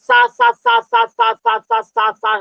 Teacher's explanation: दो लेयर, हल्के से लेयर के बीच से वायु जब प्रवेश कराओगे तो सनसनाहट की आवाज आती है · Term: ऊष्मीय व्यंजन